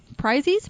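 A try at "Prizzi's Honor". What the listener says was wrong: No. Honor. Prizzies. You got to put the T. I know, but the way you pronounce it, Prizzy's Honor.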